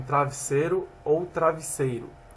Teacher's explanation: Alteamento da vogal E e I em realizações pretônicas